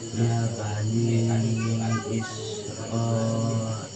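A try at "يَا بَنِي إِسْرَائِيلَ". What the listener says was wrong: Coba panjangkan sesuai dengan hukumnya. 4 atau 5 harokat. Ini dia ya, panjangnya tadi ro, maka 4 atau 5 harokat.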